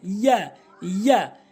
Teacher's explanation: ইয়া জিহ্বার মাঝখান উপরের তালুর সঙ্গে